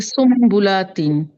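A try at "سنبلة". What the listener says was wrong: একটু গুন্না করতে হবে, সুম্বুলাতিন।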